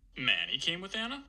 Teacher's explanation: the F0 just rises up to the end of the utterance